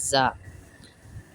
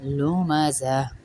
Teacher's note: زا میں دانت بند ہو رہے ہیں، پھر ہم سختی سے پڑھ رہے ہیں، زا سختی والا لفظ ہے، جیسے زیبرا بولتے ہیں نا ہم، وہ والا زا.